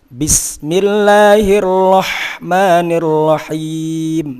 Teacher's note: bis penekanannya lebih kuat. Ya, tujuannya yaitu tadi agar ada unsur jaroyan mengalirkan nafas.